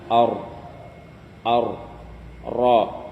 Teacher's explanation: bergetarnya ujung lidah ketika mengucapkan huruf dengan getaran yang halus, disebabkan karena sempitnya makhraj. Nah, at-takrir ini hanya pada huruf ra.